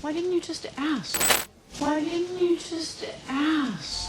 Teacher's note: omitiendo la segunda D y la primera D la pronuncias como una R en español